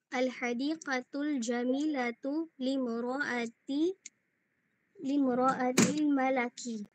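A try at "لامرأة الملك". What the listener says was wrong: Pag ginawa mong patha yun, malak, anong ibig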